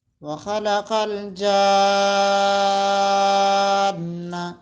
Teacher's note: مدہ کو 5 سیکنڈ تک ہم لانگ کر کے پڑھتے ہیں اور الف کو 1 سیکنڈ تک، تو یہ ہو گیا 6